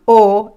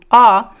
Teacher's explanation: the vowel o which we have the closed sound o and the open Sound ah